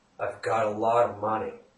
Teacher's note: the final letter T is pronounced somewhere in between R and D